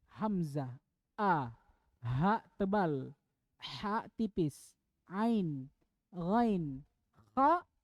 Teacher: enam huruf dan keenam-enamnya ini semuanya keluar dari tenggorokan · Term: huruf Izhar